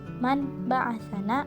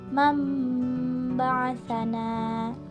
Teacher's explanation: tanwin berubah bacaannya menjadi bunyi mim. Contohnya, man ba'asana, maka dibaca menjadi mam ba'asana.